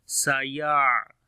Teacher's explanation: On the ain we make tawassut quality